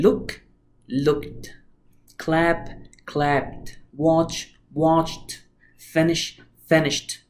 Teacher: يبقى اي sound بعد اي سوري اي اي دي بعد اي sound من sounds دي زي الكا والبا والاس او الس والتشه whatever لازم تتنطق ت sound